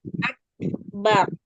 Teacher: Hams itu mengalir. Jadi pada huruf kaf, misalnya huruf kaf ini kita baca sukun. Di situ kita keluarkan dulu sifat syiddahnya. Setelah itu kita tampakkan sifat hamsnya. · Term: syiddah dan hams